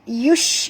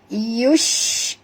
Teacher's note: bunyikan huruf shin ya, yang tafashi tu ya. Yush, bunyikan angin yang keluar ya.